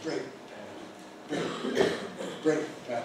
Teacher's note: And like the big majority of compound nouns, it has the stronger element first. So we put the stress on the first element and we say brake pad.